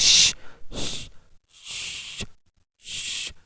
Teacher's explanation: that the at first at first the art blade of the tongue will touch at the back of the alveolar Ridge while producing the sound Shh and then it will attach it will go close to the